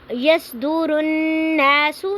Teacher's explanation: نا پہ نون مشدد ہے تو یہاں پہ غنہ ہو رہا ہے، آواز کو ناک میں تھوڑی دیر کے لیے ٹھہرانا ہے۔